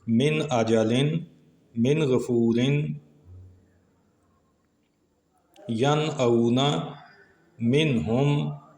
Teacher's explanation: نون ساکن پہلے کلمے میں اور حمزہ اور غین یہ دوسرے کلمے میں آئے تو اظہار ہوا، نون کو ظاہر کیا۔